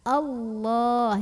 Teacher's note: Maka bacanya itu ditebalkan. Bagaimana cara menebalkannya? Dengan cara mengangkat pangkal lidah kita. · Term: tafkhim